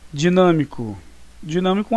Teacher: é a antepenúltima sílaba mais forte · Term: proparoxítona